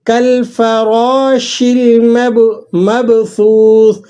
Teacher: فا ہونٹوں سے ادا ہوتا ہے اور را کو آپ نے موٹا بھی پڑھنا ہے اور ایک الف تک آپ نے اس کو لمبا بھی کرنا ہے۔